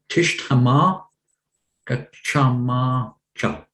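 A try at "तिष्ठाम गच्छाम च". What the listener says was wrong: Be careful of the vowels in that first word, the long and the short.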